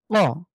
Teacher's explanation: আমি কফের যে উচ্চারণ রয়েছে ঠিক একই জায়গা থেকেই ধাক্কা দিয়ে জীভের গোড়া তার উপরের তালুর সাথে লাগিয়ে তাহলে ধাক্কা দিয়ে আমরা পড়বো